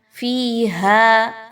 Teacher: فیہا، فا زیر یا، فی یا مدہ ہے، ہا الف مدہ ہے، دونوں کو 1 سے 2 الف کے برابر لمبا کرتے ہوئے پڑھیں گے